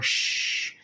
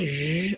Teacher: The only difference between sh like shout and zh like measure is whether or not my voice is on. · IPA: /ʒ/